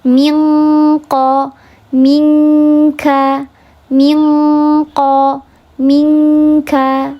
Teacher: lebih mendekati ke khayshum, lebih mendekati ke gunnah, sehingga bunyinya minqa. Karena nun sukun gak bisa dibunyikan di situ, tidak bisa jelas berbunyi di sana.